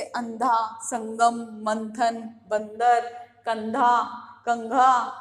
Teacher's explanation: उच्चारण करते समय वायु कहाँ से निकलती है, नाक से बाहर निकलती है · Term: अनुस्वार